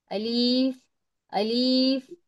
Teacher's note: الف منہ کے خالی حصے سے ادا ہوتا ہے